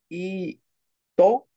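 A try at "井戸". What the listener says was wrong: So normally it would be to, but we do have rendaku here. Ido.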